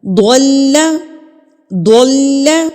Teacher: جب میں نے ضاد پڑھا تو منہ کو گول کر لیا، اور جب میں نے لام پڑھا تو میں نے اسمائل کر لی، تو لام میرا آٹومیٹکلی باریک ادا ہوا ہے